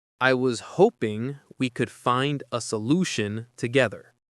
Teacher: Stresses on ho in hoping, lu in solution, and ge in together. The G in together is soft, like in pleasure.